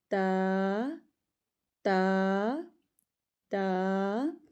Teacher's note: تا میں زبان کی نوک اٹھانی ہے اور اوپر والے دانتوں کے اندرونی کنارے ان کی جڑ کے ساتھ لگا دینی ہے اور ایک الف جتنا لمبا کر کے پڑھنا ہے.